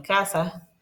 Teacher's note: También se da el caso de la aspiración en posición final